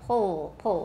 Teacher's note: it's the back of your tongue that becomes very tense and it gets close to your soft palate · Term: velarized l